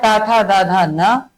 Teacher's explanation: ता वर्ग की बात करते हैं। कहां से उच्चारण होगा? दंत से होगा।